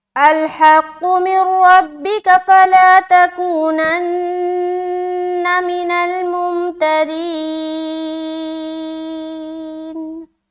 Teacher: را کو باریک رکھتے ہوئے کھینچیں گے کیونکہ را کے نیچے زیر ہے، آگے یا ساکن ہے تو یہ یا مدہ ہو رہا ہے، لیکن را باریک رہے گی زیر ہونے کی وجہ سے.